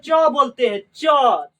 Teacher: तो जीभ जो है ना ये तालु में जाके सट जा रहा है